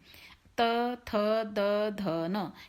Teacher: हमारी जो जीभ है वो दांतों का स्पर्श करती है, दांतों को छूती है, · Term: तवर्ग